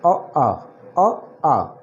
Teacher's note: अ आ उच्चारण स्थान कंठ से, कंठ यानी कंठीय, कंठ यानी कंठीय।